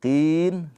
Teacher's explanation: Jadi yang tadinya mad thai hukumnya menjadi mad arid lisukun. Qi ini dibaca panjang. Boleh boleh dua boleh empat, boleh enam harakat gitu ya.